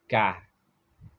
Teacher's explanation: dibaca di bawah pangkal lidah sedikit ke depan